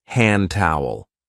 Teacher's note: also elides the D in hand towel.